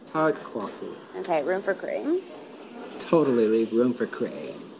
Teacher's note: They speak with what's called vocal fry, which is when you can hear the vibration in a raspy low voice that drags out certain syllables.